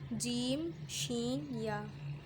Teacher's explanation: زبان کے درمیان اور تالو کے درمیان سے ادا ہوتے ہیں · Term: حرف شجریہ